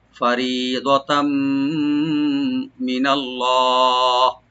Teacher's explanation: মিমের সাথে মিলাইয়ে ইদগাম উইথ গুন্না হবে